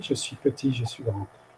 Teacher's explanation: the S at the end of je suis is also silent.